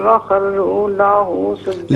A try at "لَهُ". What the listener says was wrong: لاہو نہیں، لہو لہو.